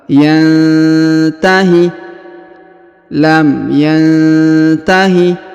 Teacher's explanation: huruf nun sukun bertemu huruf Ta Maka didengungkan dan disamarkan